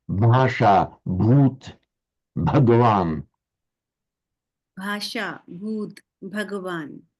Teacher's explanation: In all of those you hear there was a b followed by a slight aspiration but no vowel in in between.